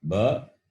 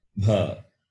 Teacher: Ba is Alpa Prana, Bha is Mahaprana.